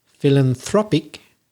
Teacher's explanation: So it's in the second syllable when it's a noun, philanthropist, but it's philanthropic. It's on the third syllable when it's the adjective.